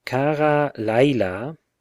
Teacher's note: or by a word with the accent on the first syllable the tone is generally shifted back to the penultimate syllable